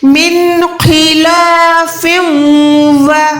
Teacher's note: من خلاف ولا, سب سے پہلے خو کو زیر ہے, لیکن خو کو پھر بھی آپ نے موٹا رکھنا ہے کیونکہ خو جو ہے پروپر موٹا حروف ہے, ہمیشہ ہر حال میں ہر نشانی کے ساتھ موٹا ادا ہوتا ہے. · فا دو زیر کے بعد واو ہے, یہاں پر گنہ کریں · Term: ادغام گننے والا